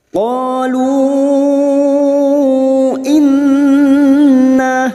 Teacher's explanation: Nun yang bertasdid gunnah musyaddadah kita dengungkan selama 3 harokat.